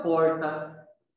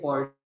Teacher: Esse R de porta. Foneticamente, fonologicamente, a classificação dele é R retroflexo.